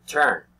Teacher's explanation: the mouth is half open, and the sound comes from the middle part of the mouth